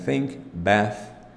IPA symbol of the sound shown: θ